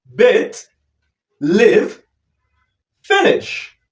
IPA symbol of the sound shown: ɪ